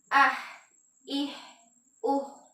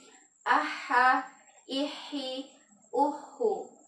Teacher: Kenapa disebut ar-rohwah? Karena ketika kita mengucapkan huruf ha yang berharakat sukun atau berharakat tasydid, maka suaranya itu tidak tertahan